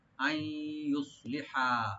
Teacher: আই এখানে ইদগাম with গুন্না, আই নুন ইয়ের সাথে মিলে গুন্না করে ইদগাম করা হবে, সংযোগ করা হবে।